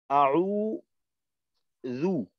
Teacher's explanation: জিহ্বার আগা সামনের উপরের দুই দাঁতের আগার সঙ্গে লাগবে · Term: জাল